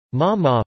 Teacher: Ma ma, falling, means scold